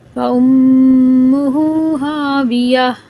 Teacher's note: میم مشدد کا ادھر بھی غنہ کریں گے